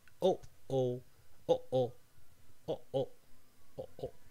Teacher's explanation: the closure of your vocal cords that is called the glottal stop is what goes in between oh, oh, oh, oh, oh, oh, try to place your hand against your throat and then say, oh, oh, oh, oh. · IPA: ʔ